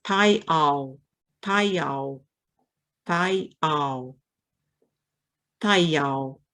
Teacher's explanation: You can really hear the blending of the vowels as you say it faster and faster. You know, it goes from thayao to thayao.